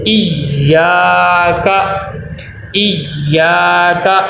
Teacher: یا کے اوپر تشدید ہے، تشدید پہ ٹھہراؤ ہو اور سختی ہو